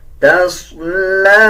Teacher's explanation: تصلی، صاد کو پر یعنی موٹا پڑھا جائے گا، لام کے اوپر کھڑا زبر ہے، 1 سیکنڈ لمبا کریں گے اور یا کو سکپ کر دیں گے۔ یہ لام کے اوپر کھڑا زبر ہے، لام کو پڑھا جائے گا، یا کو نہیں پڑھا جائے گا۔